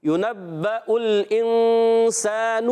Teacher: یہاں اخفا کا قاعدہ ہوگا، غنہ کریں گے ایک الف کا اور نون کو چھپا کر ادا کریں گے ایک الف کا غنہ کرتے ہوئے. اور یہاں آگے والا جو نون ہے، نون پر پیش ہے، حرکت ہے، اور گول ہوں گے، مگر اس حرکت کو ہم نے کھینچنا نہیں ہے. · اور یہاں آگے والا جو نون ہے، نون پر پیش ہے، حرکت ہے، اور گول ہوں گے، مگر اس حرکت کو ہم نے کھینچنا نہیں ہے. آواز آئے گی یُنَبَّأُ الْإِنسَانُ.